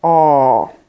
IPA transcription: ɔ: